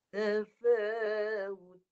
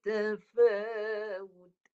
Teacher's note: Dengungnya nipis. Sebab ta. Dia nipis.